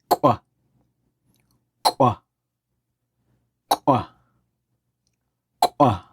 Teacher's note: So the W at the end, if you've heard this, it's like blowing out with pursed lips. Not quite a whistle, but and so it's a bit of an unvoiced vowel there tacked on at the end.